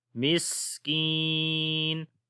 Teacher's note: کی کو لمبا کریں گے، یا مدہ ہے یہاں پر ، تو پڑھیں گے مسکین وَلَا يَحُضُّ